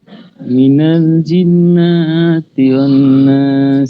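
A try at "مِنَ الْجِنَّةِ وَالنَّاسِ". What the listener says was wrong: জিন্নাতে তো টান নাই। মিনাল জিন্নাতি ওয়ান নাস। জিন্নাতে টান নাই। জিন্নাতি ওয়ান নাস।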